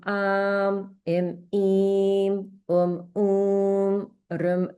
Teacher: the long vowels are being pronounced, you know, about twice as long as the short vowels